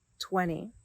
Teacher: sometimes Americans drop the T and it sounds like 20.